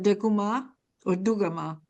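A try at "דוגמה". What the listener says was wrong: You have to stop where the 2 dots are and not say them. So it's Dugma. You don't say those 2 dots. They're silent. Dugma.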